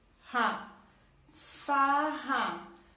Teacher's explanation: o som do R, sai lá da garganta